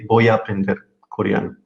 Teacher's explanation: so we don't notice that there is a little a connecting both verbs